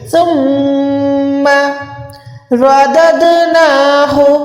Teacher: ثم رددناہ را موٹی ہے دال کو دال کے ساتھ ملا کے کلکلا کریں گے. اس دال پہ کلکلا بلیک والے پہ نہیں ہوگا لیکن بلو والے پہ ہوگا.